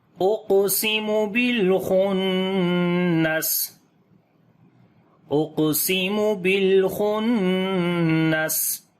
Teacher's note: قاف کے اوپر قلقلہ کریں گے، کمزور قلقلہ ہوگا کیونکہ قلقلہ والا جو حرف ہے جزم کے ساتھ لفظ کے بیچ میں آ گیا ہے اس وجہ سے۔